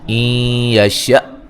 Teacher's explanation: حمزہ کو جھٹکے سے ادا کریں گے، نون ساکن کا ادغام مع الغنہ ہے۔